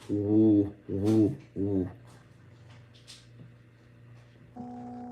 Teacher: So we are rounding our lips. This is a labial velar. So we're rounding our lips, and our tongue is up near the the top back of our mouth, the soft palate, and then it's voice.